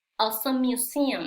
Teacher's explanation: Porque la es muda y sigue el mismo sonido en museum Entonces lo unimos como si fuera una sola m